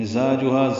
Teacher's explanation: مزاجھا زا الف مدہ ہا الف مدہ، زا کو تیز صفیر کی آواز سے ادا کریں گے۔